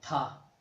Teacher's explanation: تا کو ادا کرتے وقت ہا کو اس کے ساتھ ملایا جاتا ہے